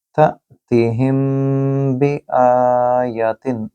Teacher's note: यह है इख्फ़ाए शफ़वी क्योंकि मीम साकिन के बाद बा आ रहा है।